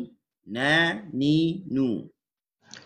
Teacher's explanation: Makhraj sekunder dia di hidung. Tapi kita tak perlu tambah di hidung banyak. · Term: nun